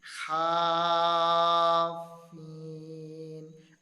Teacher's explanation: الف مدہ کے بعد والا جو حرف ہے اس کے اوپر تشدید ہے اور ہم نے کھینچ کر پڑھا، لمبا کر کے پڑھا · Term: مد لازم کلمی مثقل